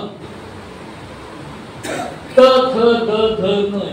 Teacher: जिभेचं टोक दाताच्या आतल्या बाजूला लागतो